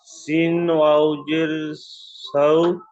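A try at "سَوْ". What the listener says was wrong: সিন ওয়াও জের নয়, সিন ওয়াও জাবার।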